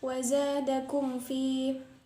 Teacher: terdapat hukum bacaan idhar syafawi sebab ada mim sukun bertemu dengan huruf fa. Mimnya tetap dibaca jelas.